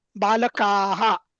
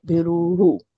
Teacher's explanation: जेव्हा हा. विसर्ग असतो ना तेव्हा अलीकडचा जो स्वर असेल ना त्याप्रमाणे त्या ह चा उच्चार होतो. म्हणजे अकारांत असेल तर ह अह असं होतो.